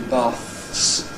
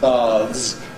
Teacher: made a difference between having 20 baths a month on one hand voiceless and going to the public baths for a swim on the other hand voiced